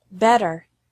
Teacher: Americans often pronounce the letter T like a quick D sound